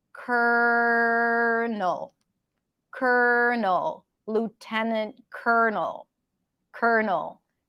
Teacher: so this word has an L in the spelling has two L's but the first L is actually pronounced as an R